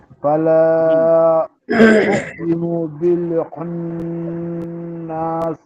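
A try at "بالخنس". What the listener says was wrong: হ্যাঁ, নাস টান হবে না, বিল খুন্নাস। হ্যাঁ, খুন্নাস।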